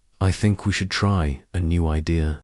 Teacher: Voice goes down at the end. This is collarded falling intonation and it instantly makes you sound more mature, certain and in control.